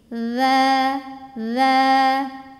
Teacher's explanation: ujung lidah bertemu dengan ujung dua gigi seri atas bunyinya ngalir berisik